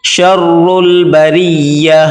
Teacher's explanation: یہاں پر را کو باریک کر کے پڑھیں گے